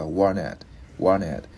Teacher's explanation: Chữ này chữ Y, mình đáp lưỡi chữ T lên. Một hồi khi mà mình nói nhanh á, thì mình luyến cái chữ N với cái chữ Y và warn it.